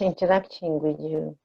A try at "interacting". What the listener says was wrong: Yeah, be careful with your R.